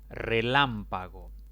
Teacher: Contando de izquierda a derecha, la mayor intensidad recae en la antepenúltima sílaba. Por lo tanto, se le debe colocar tilde. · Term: esdrújulas